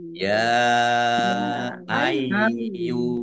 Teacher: Yaknya ada tasdidnya dibaca double ai dibaca ai dulu baru yu